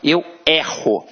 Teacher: Observa que este E tem um som aberto.